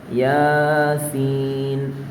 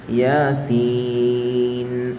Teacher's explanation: യാ ഒരൊറ്റ അലിഫിന്റെ ഖദറും സീൻ എന്നുള്ളത് മൂന്ന് അലിഫിന്റെ ഖദറും